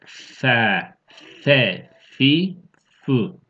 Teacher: F harfi üst dişler alt dudağı ısıracak.